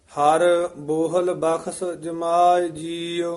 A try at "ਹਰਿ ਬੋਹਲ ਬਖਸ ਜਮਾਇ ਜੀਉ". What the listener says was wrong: ਇਹ ਹਰ ਤੇ ਯਮਕ ਲਾ ਦੇਣੀ ਹੈ। ਹਰ ਬੋਹਲ ਬਖਸ਼ ਜਮਾਏ ਜੀਉ।